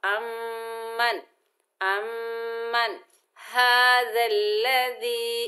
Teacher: नून साकिन के बाद हरूफे हल्की के 6 हरूफों में से हा आ रहा है तो नून साकिन में इजहार होगा, यानी इक्फा गुना कुछ भी नहीं होगा, इजहार हलकी का कायदा होगा।